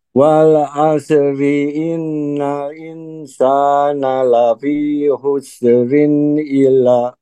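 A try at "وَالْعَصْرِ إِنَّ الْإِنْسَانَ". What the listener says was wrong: tahan dulu Prof, sebentar. Pada kalimat innal, lamnya tahan dulu. Wal asri innal, tahan di situ.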